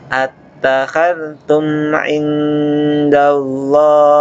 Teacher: mim sukun ketemu ain, izhar syafawi, dibaca jelas.